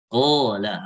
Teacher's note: Qala harus tebal juga alifnya. Jadi alif mengikuti qaf ya. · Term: tafkhim